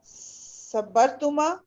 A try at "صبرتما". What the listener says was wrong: صبرتما زبردست.